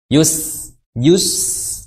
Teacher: wayus tipis ya Sin wayus tipis ya bukan wus seperti itu jadi setelah memonyongkan kedua bibir karena menunaikan huruf ya yang berharakat damah maka setelah masuk ke Sin ditarik bibirnya Yus Yus kalau slionnya atau pelannya seperti ini wayus seperti itu